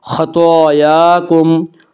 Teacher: طا بھی حروف مستعلیہ میں سے ہے، اس لیے طا کو بھی پر پڑھیں گے۔ خطایاکم، طا کے اوپر اور یا کے اوپر کھڑا زبر ہے، کھڑا زبر کو ایک الف کے برابر کھینچ کر پڑھیں گے۔